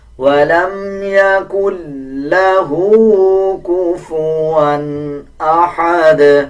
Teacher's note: لام کو مضبوطی کے ساتھ ادا کیا جائے گا اور ہا کو 1 سیکنڈ لمبا کر کے پڑھا جائے گا